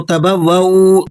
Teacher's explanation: بعض ساتھی اس کو تبوؤ دوسری واو کو بھی کھینچ دیتے ہیں، اس طرح پڑھنا درست نہیں ہے